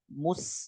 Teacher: Ini nggak boleh tebel, maka ketika ketemu sin, bibirnya nggak boleh terus mencucu, harus ditarik. Mus, nah gitu. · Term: sinnya tipis